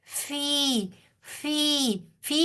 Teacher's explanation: پھر یائے مدہ آ رہی ہے، فازیر یا فی، یائے مدہ، یائے ساکن سے پہلے والے حرف کے نیچے زیر ہے فا کے نیچے، تو یہ پھر کھینچ کر پڑھا جائے گا